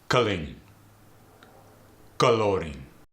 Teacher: A lot of times in the Arabic dialect, you throw a vowel right in front of the L.